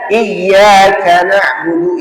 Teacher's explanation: bacaannya nabr, hentakan suara pada kalimat tasydidnya